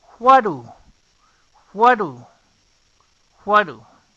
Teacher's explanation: Observen, en what termina con una T y esta es una flap T y do inicia con una D que es una flap D. La flap T y la flap D suenan como una R suave, por lo que what y do se unen y hay un solo sonido en what do. No es exactamente como lo debes de pronunciar, pero si estás iniciando, puedes empezar pronunciándolo de esta manera.